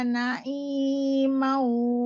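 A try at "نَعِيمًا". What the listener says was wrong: Ini lagi sama manya pendek.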